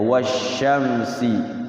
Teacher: Jadi enggak berbunyi alnya kayak wasyamsi. Wasyamsi kesannya kayak tidak ada alnya padahal situ ada alnya. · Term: Alsamsiyah